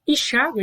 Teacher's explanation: Embora seja a letra M, aqui não se trata de somente uma nasalização, mas sim a indicação de uma semivogal fonética, uma semivogal com som de I